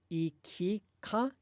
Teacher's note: in both ikika, and ikuka, the vowel in ki and the vowel in ku both get devoiced.